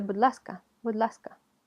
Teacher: Pero donde no es una palabra aislada, будь, sino que viene junto con ласка, esa palatalización casi no se escucha